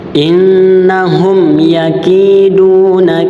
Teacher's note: mim mati bertemu dengan huruf ya, maka dia hukum bacanya izhar syafawi. Cara bacanya dibaca dengan jelas dan tidak disamarkan